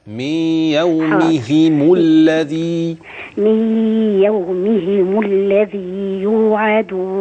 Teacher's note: أبين كسرة الميم والهاء